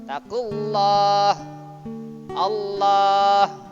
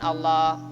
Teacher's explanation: Terus ini lam jalalah jatuh setelah huruf yang di garis depan, pasti lam jalalah dibaca tebal atau bacaan tafkhim ya